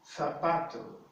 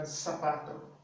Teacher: So that would be zapato. But in Spain, the Z is pronounced as the C, the TH in the word think, like think.